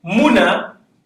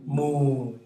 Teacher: So instead of writing muna, I can write moon. So the wow that is silent is elongating the u sound.